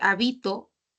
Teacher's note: la mayor fuerza de voz no está en la antepenúltima ahora está en la penúltima